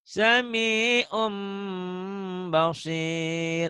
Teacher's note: Ada bunyi M-nya, bindeng ke eng, dan harus diapain? Ditahan. Ditahan. Sama seperti Ikhfa. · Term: Iklab